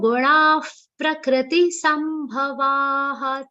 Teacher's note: The visarga's pronunciation, many people end up saying fa. It's not the father's fa, it's ha.